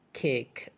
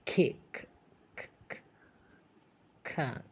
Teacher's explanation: kick is a great example of the K sound with both aspiration and lack of aspiration. Is strongly aspirated.